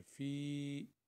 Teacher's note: یہ جو فی ہے یہ حروف مدہ بالیا ہے، تو یہ 2 حرکت کے برابر یعنی 1 الف کے برابر پڑھی جاتی ہے